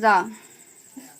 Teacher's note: इसमें मुख द्वार जीभ की नोक से शीघ्र ही बंद होता है और दो-तीन बार खुलता है और दो-तीन बार खुलता है। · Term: लुंठित